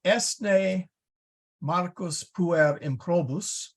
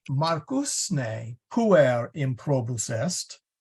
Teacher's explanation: But if I say Marcus ne puer improbus est, is Marcus an impudent boy? So the focus there is particular on Marcus. So in English, you'd kind of have to hit that Marcus pretty hard.